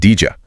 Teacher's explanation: D plus Y makes J sound. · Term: assimilation